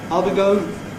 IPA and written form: ɑː.l b.i g.əʊ.n (I'll be going)